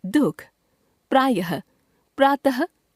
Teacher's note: अह को विसर्ग कहते हैं। प्रायः यह शब्दों के अंत में आता है और ह जैसा उच्चारण देता है